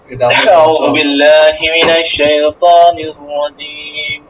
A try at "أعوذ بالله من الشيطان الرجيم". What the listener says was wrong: দেখেন, আমি বলি আপনাকে, আউযু বিল্লাহটা এইভাবে না, আউযু বিল্লাহটা আরেকটু স্লো হবে। আউযু বিল্লাহি মিনাশ শাইতানির রাজীম, আউযু বিল্লাহি মিনাশ শাইতানির রাজীম, বিসমিল্লাহির রহমানির রহিম।